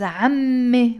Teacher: We don't pronounce the T مربوطة when the word is on its own.